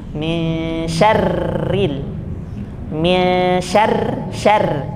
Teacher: Kemudian contoh yang kasroh dibaca tipis, syarri, min syarri. Jadi tidak dibaca tebal. Kalau baca tebalnya tuh bunyinya begini, min bukan syarri, bukan, tapi bacanya langsung tipis, min syarril min syarr seperti air biasa ya.